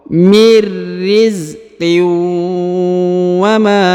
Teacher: tanwin in bertemu dengan waw bertasdid ya, maka dia ditahan dan ditekan pada huruf yang ini ya, lalu melebur dan menghilang ke huruf waw.